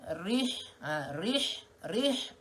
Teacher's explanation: matikan ha pedas di kawasan tengah kerongkong